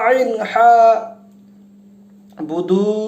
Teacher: 2 হরকত পরিমাণ টান দিতে হবে, কারণ ওয়াও সুকুন তার আগের হরফ পেশ আছে, যে কারণে এখানে আমাদেরকে টান দিতে হবে।